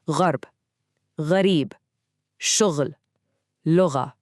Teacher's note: this sound is also made in the back of the throat, just like ain, but this one has vibration. It's what linguists call a voiced sound. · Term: ghain